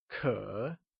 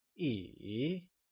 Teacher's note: It is said with a falling rising tone, like Kě